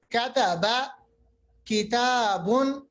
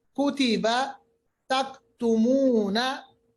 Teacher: फर्क ये है कि कॉफ पढ़ते वक्त मोटे पढ़ते हैं हम, और जो जबान की जड़ ऊपर मिलती है वो सॉफ्ट प्लेट के साथ मिलती है, यानी बिल्कुल ही आखिर में। और जबकि काफ कॉफ से थोड़ा आगे अदा होता है, हम कह सकते हैं कॉफ से थोड़ा हटकर अदा होता है, इसीलिए ये बारीक अदा होता है, ये मोटा अदा नहीं होता।